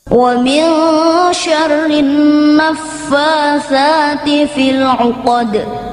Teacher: Kamu perhatikan pada bacaan Asy-Syamsiyah. Cara bacanya, huruf al tidak terbaca.